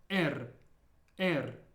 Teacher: this letter is a little bit different than the English R because it's rolled similar to how you roll your r's in Spanish